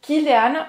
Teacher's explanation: Esse A é mais aberto.